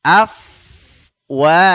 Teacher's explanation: Afwaja, mengalir udara ya ketika mengucapkan huruf fa ya. Jadi perut bibir bawah ya bertemu dengan ujung 2 gigi seri atas.